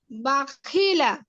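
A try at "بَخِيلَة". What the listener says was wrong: এই যে মাঝখানের হরফটা অনেক সময় টান হয়ে যায়, হ্যাঁ, এজন্য একটু সতর্কতার সাথে পড়বো আমরা। আলিনা বাখিলা সামিয়া, টান না হয়ে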